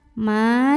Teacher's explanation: karena ada Alif sebelumnya Fatah maka mimnya kita panjangkan dua harokat